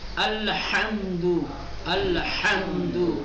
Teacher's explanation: حرف ہا حلق میں ایک خاص دباؤ ڈالنے سے ادا ہوتا ہے، جس طرح سے گلے میں حلق میں کوئی چیز پھنس گئی ہو، اس پھنسی ہوئی چیز کو باہر نکالنے کے لیے حلق پہ جو دباؤ ڈالا جاتا ہے وہی دباؤ اب ڈالیے تو یہ حرف ادا ہوگا۔